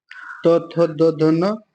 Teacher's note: दंत के अंतर्गत त वर्ग आएगा